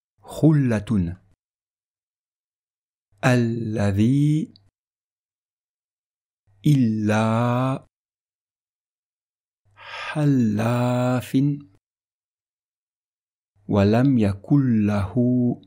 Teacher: le Lam sera prononcé avec légèreté, sans mettre d'emphase, sans faire d'effort particulier de prononciation